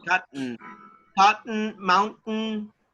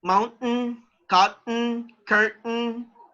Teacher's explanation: actually the letter t is not pronounced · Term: silent t